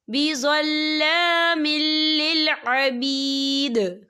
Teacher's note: یہاں پر ادغام ہوگا، تو ہم اسے بنا غننے کے پڑھیں گے، ہم یہاں غنہ بالکل نہیں کریں گے